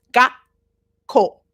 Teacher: before you say the K you pause gako like that okay so it's like you get halfway through